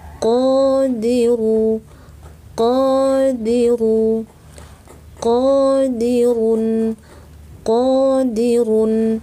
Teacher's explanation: Qodiru, ru tebal, tafkhim, qo tebal, angkat pangkal lidah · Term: Q tebal